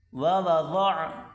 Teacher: دو واو الگ الگ پڑھے جائیں گے